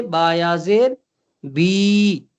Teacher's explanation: बाजेर बी से बायाजेर बी, जज़म वाली या से पहले जेर आए तो या मद्दा कहलाता है। या मद्दा को भी एक अलिफ के बराबर खींच कर पढ़ेंगे।